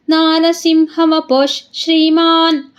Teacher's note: ಶ್ರೀ ಹಿಂದೆ ನಮಗೆ ವಿಸರ್ಗ ಇದೆ ಅದಕ್ಕೆ ಅಲ್ಲಿ ಅರ್ಧಶ ಆಗುತ್ತೆ